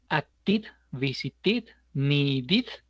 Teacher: los verbos que terminan en sonido t o sonido d, need, visit, eh act, por ejemplo, eh su versión pasada es id